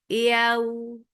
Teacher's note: Yaw, ya is soft. You are lifting your tongue up to the palate, but it is not touching. That is making ya very soft letter.